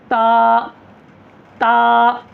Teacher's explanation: ता को एक अलिफ के बराबर खींचना है ता ता को बारीक पढ़ना है मुह खोल करर पढ़ना है